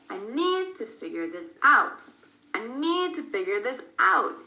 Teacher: We do stress that out. We stress the verb figure also, but a little bit less than the preposition.